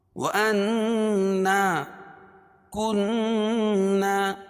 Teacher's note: دونوں جگہ نون مشدد ہے، اس میں ایک الف کے برابر غنہ کر کے پڑھیں گے۔